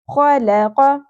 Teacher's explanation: قاف یہ نرم تالو سے ادا ہوتا ہے · خ جو ہے وہ خراش کے ساتھ پڑھا جائے گا، کھردرا اس کے اندر آپ کو ایلیمنٹ نظر آئے گا